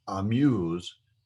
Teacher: Now I have shortened, when I pronounced amuse, I shortened the A sound where it almost sounds like a U sound. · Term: hataf patuk